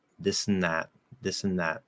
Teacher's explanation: And then I'm just opening from there. There's no TH, there's no dental D, there's no anything. It's just a flatter N. · I can just go straight from S to N because they're right there. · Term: dental N